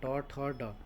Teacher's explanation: मूर्धन्य का हो जाएगा आपका ट, यानी कि जीभ मुड़ रही है